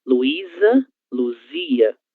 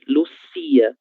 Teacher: quando nós formos pronunciar a letra Z, as cordas vocais elas vão vibrar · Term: vozeado